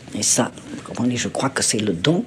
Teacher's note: If you listen to the way she pronounced the R, I mean, they're really strong. They're really strong and they're really like guttural in the throat.